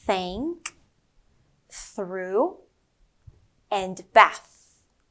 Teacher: when it's quiet like bath or think there is no buzz it's just a soft air flow coming out of your mouth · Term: quiet th sound